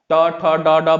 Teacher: जब उच्चारण करेंगे तो क्या होता है, जो हमारा जबान होता है वो जाके वो कहाँ लगेगी, मूर्धा के पास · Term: मूर्धन्य